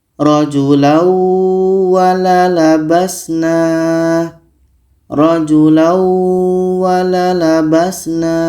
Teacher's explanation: Waw adalah huruf idgham bi gunnah. Maka ini tanwin ini kita masukkan ke waw dan kita dengungkan.